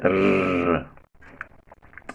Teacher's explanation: Then there is only one post-alveolar sound. That is, the sound is produced just at the back of the teeth ridge. That is where the tip of the tongue touches.